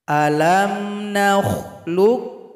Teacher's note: jadi enggak ada lagi bunyi qolqolah